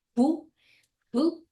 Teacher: Remember, that's H-U, fu, but we write it like F-U, but we don't have F pronunciation. We don't bite the lips there, right?